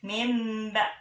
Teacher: Jadi bila nun mati atau tanwin bertemu dengan huruf ba, maka bunyi n-nya dirubah menjadi m. · ucapan m bibir tidak dirapatkan, yakni dua bibir bertemu akan tapi tidak ditekan kuat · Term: iqlab